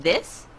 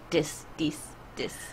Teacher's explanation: I feel like Koreans pronounce TH a lot like D. So, instead of saying this, they say this, this, this.